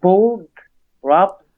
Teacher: the ed needs to be voiced. Make sure your throat's vibrating.